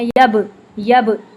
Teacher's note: با کو جب ہم ساکن فارم میں پڑھتے ہیں تو اس پہ ہم قلقلہ کرتے ہیں، یب، یب، ایسے ڈبل ساؤنڈ آتی ہے.